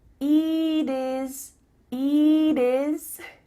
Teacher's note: here the final T is changing to a D